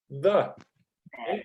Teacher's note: Põe a língua entre os dentes e faz a vibração. Pronuncia um D, só que com a língua entre os dentes.